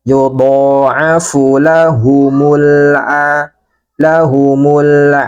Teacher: lamnya dibaca jelas suaranya sebagian kita alirkan